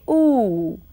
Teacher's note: these pictures look at this lady trying to say ooh and you can make out how her lips are rounded and her lower jaw has moved forward